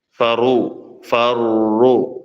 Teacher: സമയം ഉപയോഗിച്ചുകൊണ്ട് അദ്ദ സ്വലി സ്വല്ലി ഫറു ഫറു അറനെ എന്ത് ചെയ്യണം ഇരട്ടിയാക്കണം രണ്ട് റാഹുകൾ പറയുന്ന സമയം അതിനുവേണ്ടി എടുക്കണം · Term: ഷദ്